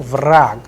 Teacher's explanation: Vrag, here you will see that ge is changing into ke. Vrag, the sound is of ke at the end. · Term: devoicing